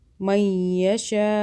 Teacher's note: بڑی مدہ ہے، زیادہ کھینچیں گے الف کے برابر